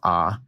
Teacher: So one thing that characterizes the Western vowel shift, and this is something that I do as somebody from New Mexico, the vowels in the words lot and thought, for me, are the same vowel. When I pronounce them, they're both ah. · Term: merger of lot and thought